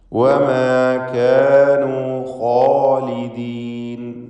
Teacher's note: അതിനെയാണ് അലിഫ് കൊണ്ട് ദീർഘിപ്പിക്കുന്നത്. ഖാഇനും അലിഫിനും തഫ്ഖീമാണ്, തടിപ്പിച്ച് ഉച്ചരിക്കണമെന്നർത്ഥം.